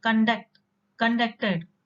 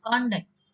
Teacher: this word has two syllables and you give a stress in the second syllable, it is used as a verb